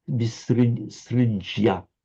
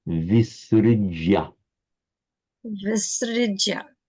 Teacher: You will distinctly hear both the j and the ya.